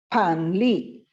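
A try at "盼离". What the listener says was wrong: Pan, nada 4 ya. Panli.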